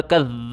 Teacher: دال کے اوپر زبان باہر نکالیں سختی کے ساتھ پڑھیں